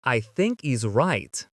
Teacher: Do you notice too at the end of the word right, there's no T sound?